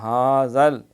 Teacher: ھذا یہ سیٹی نہیں مارنی، یہ ذال ہے نرمی سے پڑھنا ہے